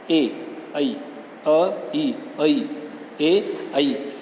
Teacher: ए जो है किस किस से मिलकर बना है? अ और ई से मिलकर बना है।